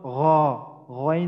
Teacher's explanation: তিন নাম্বার মাখরাজ কণ্ঠনালীর শেষ হইতে উচ্চারিত হয় গাইন খ